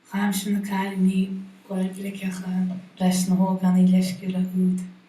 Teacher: On the object noun here, we see this nice rising pitch, and adding the demonstrative, which is now the rightmost word in the phrase, we see this nice falling pitch accent on the demonstrative.